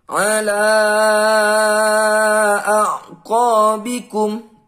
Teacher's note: bertemu dengan huruf alif di lain kata adalah bacaan Mad Jaiz munfasil panjang lima harokat